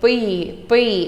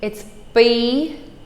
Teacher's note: The P that has no air, so B. It actually sounds nothing like a P.